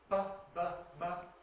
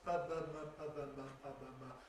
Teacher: they're made with the two lips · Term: bilabials